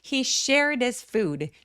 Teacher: 대명사에 H 소리들은 그렇게 소리를 또렷하게 되지 않습니다